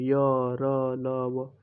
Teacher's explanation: कोई अवरोध पैदा नहीं होता इनके बोलने में। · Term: अंतस्थ व्यंजन